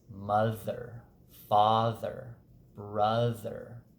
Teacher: brother in that middle position of a word because it's surrounded that th is surrounded by a voiced vowel on either side that middle sound the th will also have voice uh has